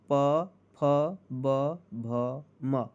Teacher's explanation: प वर्ग में ओष्ठ ध्वनिया